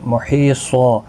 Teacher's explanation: محیصا، یہاں پر یا مدہ ہے، حی یا مدہ ہے، 1 الف کی مقدار کے برابر کھینچیں گے، اور وقف بالابدال یہاں پر بھی ہوگا۔ یہاں پر 2 زبر کو بدل کر 1 زبر کے ساتھ وقف کریں گے، وقف بالابدال ہوگا، الف مدہ بنے گا، 1 الف کی مقدار کے برابر کھینچ کر وقف کریں گے۔ · یہاں پر 2 زبر کو بدل کر 1 زبر کے ساتھ وقف کریں گے، وقف بالابدال ہوگا، الف مدہ بنے گا، 1 الف کی مقدار کے برابر کھینچ کر وقف کریں گے۔ محیصا، حروف مستعلیہ بھی صاد ہے اور الف بھی پور پڑھا جائے گا، اور کیونکہ حروف مستعلیہ کے بعد جب بھی اس کے ساتھ الف آتا ہے وہ بھی پور پڑھا جاتا ہے۔